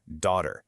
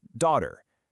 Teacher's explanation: You got the US version with that hard R at the end